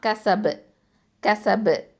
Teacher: இறுதியான இடத்துல வக்ஃபு பண்ணுற இடத்துல இருக்கிறதுனால இது வந்து கல்கலத்துல் குபுரா